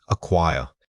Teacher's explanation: The first vowel sound, or schwa, should be very quick and almost swallowed. It barely needs effort.